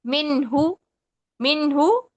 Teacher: یعنی 1 سیکنڈ میں نون کی آواز پڑھیں گے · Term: نون کا اظہار